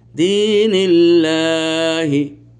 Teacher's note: এখানে কিন্তু বানান করলাম তো উচ্চারণ ধারণ করবো দ্বীনিল্লাহি কেন কারণ আল্লাহ শব্দের পূর্বে লাফজে জালালা শব্দের পূর্বে জের আছে এজন্য এটা মোটা হওয়া যাবে না বানান করার সময় এটাকে বানান করার পর উচ্চারণটাও সেম বানানের মত · কারণ আল্লাহ শব্দের পূর্বে লফজে জালালা শব্দের পূর্বে জের আছে, এই জন্য এটা মোটা হওয়া যাবে না।